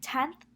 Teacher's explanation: the tongue is placed against or between the teeth instead of the alveolar ridge during the production of so that n becomes dentalized and that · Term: dentalized n